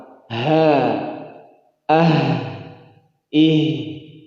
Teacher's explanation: ha punya sifat yang menonjol adalah dia rokhawah, berjalan suara, berjalan napas. Ha, ah, ih, bergetar dada ini karena besarnya huruf H.